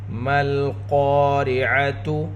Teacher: را کے نیچے زیر ہے، را کو باریک پڑھیں گے